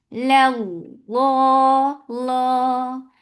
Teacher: avoid circling your lips for making lafz jalala heavy. Your lips should be in a straight position and you are making it 2 counts long.